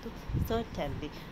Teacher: और टेनली ये दो सिलेबल्स है जिसको हम अनस्ट्रेस्ड है, जिस पर हमें जोड़ देना नहीं पड़ रहा, एकदम लाइटली हम बोलते हैं। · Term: डेक्टाइलिक